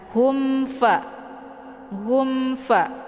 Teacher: dinamakan dengan izhar syafawi cara bacanya mimnya dibunyikan secara jelas atauel m-nya cukup ditekan saja tidak perlu ditahan